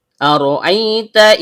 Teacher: Karena ra memiliki fathah, maka aturannya tebal atau tafkhim. · Dimulai dengan hamzah berupa alif atau hamzah qat'i yang keluar dari tenggorokan bagian bawah